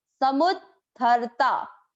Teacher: द भी सुनाई और ध भी